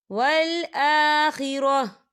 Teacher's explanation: یہاں پر چھوٹی سی آپ کو جیم نظر آ رہی ہے، تو یہ وقف جائز کی علامت ہے، تو یہاں پر ٹھہرنا بہتر ہے. وقف کی صورت میں تا جو ہے وہ ساکن ہو جائے گا